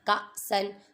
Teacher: حمزہ ساکنہ پہ جھٹکا دے کر پڑھیں گے